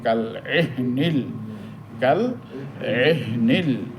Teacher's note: এহনিল এখানে হাটা সাকিন, এই হা উচ্চারণ করার সময় একটু ধাক্কা লাগবে